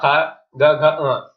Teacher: ये कंठ का स्पर्श करते हैं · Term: का वर्ग